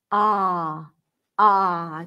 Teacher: it's actually closer to an open A sound, as in the word father or spa, ah. So the lips are not rounded.